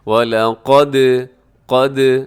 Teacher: قاف موٹا ہے، باقی تینوں حروف باریک پڑھے جائیں گے۔